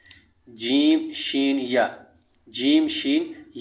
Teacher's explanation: یہ ساتواں مخرج ہے جو کہ زبان کا بیچ اوپر تالو سے لگے